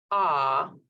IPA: ɑ: